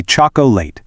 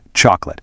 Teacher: 3 clunky syllables, but native speakers completely drop that middle O. It transitions straight into a quick 2-syllable word, chocolate.